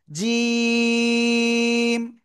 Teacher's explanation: জিহ্বার মধ্যখান উপরে তালুর সাথে লাগিয়ে তিন আলিফ টেনে পড়বো।